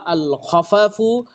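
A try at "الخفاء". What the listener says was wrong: খফা ফায় টান দেন আল খফা ও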